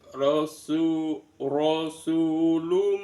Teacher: Ro, ro su ro su itu ada mad thobi'i, ada sin dommaah, ada wau sukun rasulum ada domatain bertemu dengan mim dibaca idgham bighunna dimasukkan dengan mendengung. Bunyi rasulunnya, bunyi n-nya dimasukkan ke bunyi mim disertai dengan mendengung.